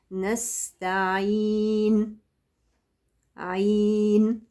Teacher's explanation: حرف السين مهموس ورخ ويجري معايا الصوت ويجري معايا النفس